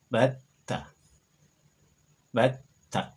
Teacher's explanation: Maka ini dibaca habba. Sama dengan huruf ta yang bersyiddah di sini, dilafalkan bat, kemudian disambung ta.